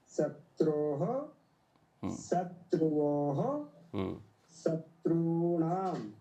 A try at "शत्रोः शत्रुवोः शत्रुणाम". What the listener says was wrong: बहुत बढ़िया, बहुत अच्छा उच्चारण किया जी।